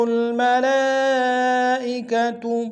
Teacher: ملائکہ میں لام کے اوپر کھڑا زبر بھی ہے اور مد متصل ہے، کم سے کم 3 انداز میں کھینچیں گے